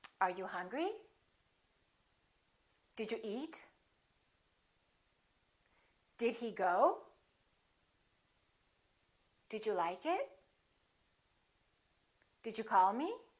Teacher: some questions which are yes no questions remember intonation goes up